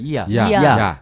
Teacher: 야는 아와 같으나 이에서 일어난다. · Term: 이중모음